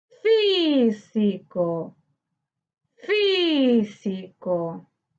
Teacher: Su sílaba tónica se encuentra en fi, correspondiente a la antepenúltima sílaba. Por lo tanto, es esdrújula.